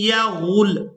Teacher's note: गैन को लाम मुशद्दद के साथ मिलाते हुए सख्ती के साथ अदा करेंगे।